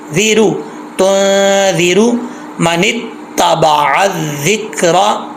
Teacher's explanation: जाल जो है इसको पुर नहीं पढ़ना, बारीक ही पढ़ना है, और जाल में सीटी नहीं होती